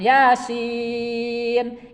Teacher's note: Ya 2 harkat, sin 6 harkat, 6 ketukan.